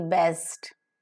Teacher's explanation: So the three-term label for bur, as in B-E-S-T, best, is voiced, vocal cords vibrate, bilabial, both the lips are involved, plosive, the air is held up and released with explosion